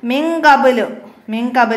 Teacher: നൂന് ശേഷം കാഫ് ഇഹ്ഫായിന്റെ അക്ഷരമാണ് അപ്പൊ അവിടെ ഇഹ്ഫാ ചെയ്ത് ഓതണം